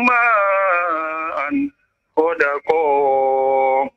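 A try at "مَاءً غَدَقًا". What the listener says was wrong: Iya, ma'an ghadaqa. Tinggal nanti perlu konsentrasi lagi ya ketika panjang pendeknya juga ya. Dan huruf-hurufnya jangan sampai keliru ya.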